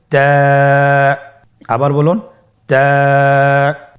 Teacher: তা হরফটি বারিক হরফ এবং এক আলিফ টেনে পড়তে হবে।